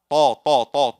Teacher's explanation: It just explode without any hams, without any air.